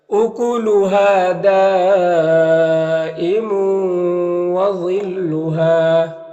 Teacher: اکلہا، اکلہا، ہا میں الف مدہ ہے اور دال میں جو مد ہے مد متصل ہے، مد متصل کو 3 سے 4 الف کے برابر کھینچ کر پڑھتے ہیں۔